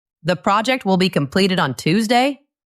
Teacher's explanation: Listen to my voice go up at the end. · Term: rising intonation